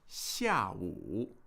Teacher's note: 下午, that's a fourth tone and then a third tone.